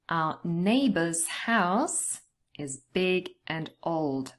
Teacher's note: we are going to stress the nouns, neighbor's house, and also the adjectives big and old